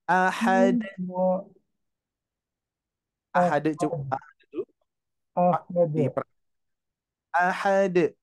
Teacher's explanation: huruf Dal itu sifatnya memantul